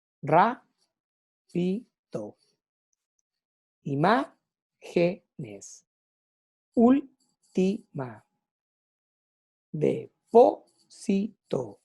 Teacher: Cuando nos encontramos con palabras esdrújulas, quiere decir que van a estar acentuadas fonéticamente, o una sílaba tónica, en la antepenúltima sílaba. Y todas se acentúan.